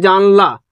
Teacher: যখনই জানলা বলে নিলাম দেখো জানে শাসাঘাতটা পড়ছে